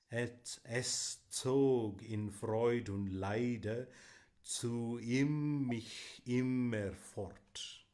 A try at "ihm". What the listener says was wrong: Okay, when a vowel is followed by an H in German, it lengthens the vowel. So IM is im, but IHM is ihm.